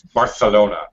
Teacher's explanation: it's Barcelona has more of a kind of a th sound